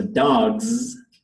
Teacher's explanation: the vocal cords are on with the G sound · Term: voiced consonant